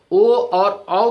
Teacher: ओ और औ का उच्चारण स्थान कंठ और ओष्ठ है।